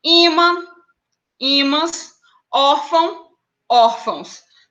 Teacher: a gente fala pelo nariz tá esse som ele sai pelo nariz pela narina · É uma marca de nasalidade que ele vai falar por onde é que esse som ele é feito, ele é extraído, né? A gente fala pelo nariz, tá? Esse som ele sai pela narina.